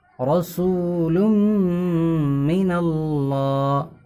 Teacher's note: تنوین یا نون ساکن کے بعد میم ہے تو گنہ کے ساتھ پڑھا جائے گا